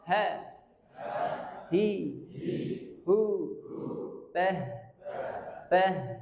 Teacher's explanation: ciri dari makhrajnya huruf ha itu ketenggoran paling bawah. Sifat yang dominan adalah dia keluar nafas dan suaranya.